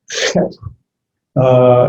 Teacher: It's that guttural sound that you're supposed to be able to use the back of your throat. Het. It's almost like you're gathering spit.